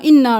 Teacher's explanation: نون پہ تشدید ہے تو غنہ کریں، دیر لگائیں، آواز ناک میں لے کے جائیں، اور اوپر مد ہے، ان پہ بھی دیر لگانی ہے، اور پھر الف پہ مد ہے تو 5 انگلیوں کے برابر اس کو بھی لمبا کرنا ہے۔